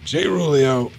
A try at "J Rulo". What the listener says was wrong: I also read it as J Rulio, but it's J Rulo, and it